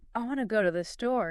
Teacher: You hear the strong beats on want, go, and store. The little words to, the, are quick and unstressed.